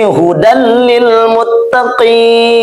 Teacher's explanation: Yang mana sudah kita ketahui lam ini termasuk daripada huruf idgham bila gunnah. Maka cukup masukkan bunyi tanwin ini kepada bunyi huruf lam, lalu jangan ditahan.